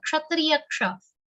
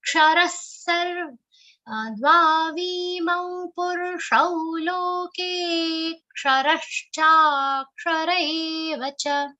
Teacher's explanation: this ksha sound should come very distinct and it should not sound like sh. It should sound like ksha, kshatriya ksha.